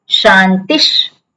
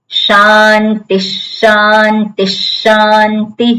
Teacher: જે શકાર એના પછી આવે એ શકારનું ઉચ્ચારણ કરવાનું વિસર્ગના સ્થાને.